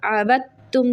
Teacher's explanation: عابدتم دال سائلنٹ رہے گا، تا کے ساتھ با ملے گا